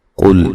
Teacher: قاف کو موٹا ادا کریں گے، لام کو ہلانا نہیں ہے